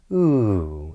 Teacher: A falling intonation this downward intonation would be ooh, and we tend to use that on exclamations, on statements and commands